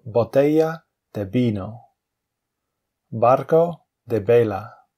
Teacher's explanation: You can see there's no difference between the B and the V in pronunciation